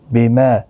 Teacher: ما الف مدہ ہے، ایک الف کی مقدار کے برابر کھینچ کر پڑھیں گے